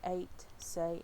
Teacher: the a sound which is high mid front unrounded and tense